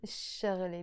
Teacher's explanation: The letter sheen is a sun letter, and all the words in Arabic that start with a sh, whenever you put an L before them, you don't pronounce this L, you just pronounce it شغلي.